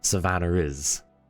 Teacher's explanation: in an English accent that sounds like Savannah is, there's that R like that gets inserted in there. It's it's called an intrusive R because it liaison the vowel sounds.